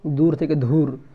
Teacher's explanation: শব্দের অল্পপ্রাণ ধ্বনিকে মহাপ্রাণ ধ্বনিতে পরিণত করার প্রবণতা দেখা যায়